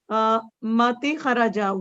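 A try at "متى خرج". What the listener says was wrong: No, not Mati. Mata.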